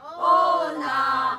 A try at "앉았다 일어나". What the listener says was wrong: 너무 떨어지잖아. 어나 나 그렇지 그렇게 올라가야 돼. 떨어져 음이 떨어져. 일어나 나가 너무 떨어져. 어나 그렇지 그렇게 가야 돼.